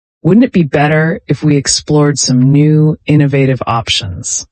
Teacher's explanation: Use a rising intonation, making it sound like a genuine suggestion.